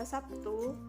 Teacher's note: Akan tetapi pada kata Sabtu, fonem B diucapkan sebagai P. Jadi, realisasi fonem B dalam pelaksanaan ujaran bisa menjadi huruf B dan P. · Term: alofon